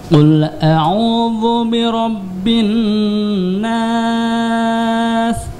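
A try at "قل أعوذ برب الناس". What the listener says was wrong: Zalnya tipiskan ya. Dzu, a'udzu.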